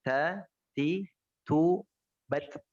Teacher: huruf ta tidak ada tidak ada tafkhim sama sekali, tidak ada tebal sama sekali